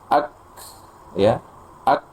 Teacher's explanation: Jadi jelas sekali setelah tertahan suaranya ada hembusan nafas. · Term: kaf sukun